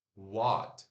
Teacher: w fazendo som de u de uva porém curto